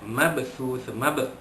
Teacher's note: ba mati di tengah kalimah, maka dilantunkan bunyinya sedikit saja, kecil saja, qalqalah sughra.